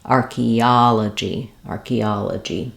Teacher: um because we're stressing here and that third syllable that means our first two syllables are going to be quicker and our third syllable is going to be stretched · They don't follow typical English spelling patterns. So for archaeology, we have the stress on the third syllable, ah, and letter O says the ah vowel. This is a typical pattern for English that we spell ah with O, like in hot or problem or archaeology. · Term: stressed syllable